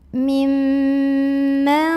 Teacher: Maka cara membunyikannya adalah mimnya dibunyikan berdengung, bunyi amnya ditahan kurang lebih 2 harokat. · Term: gunnah musyaddadah